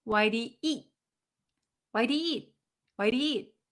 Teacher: You don't hear the t sound. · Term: the T sometimes disappears